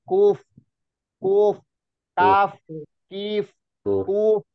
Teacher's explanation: aliran suaranya, rokhawahnya F dan mengalir.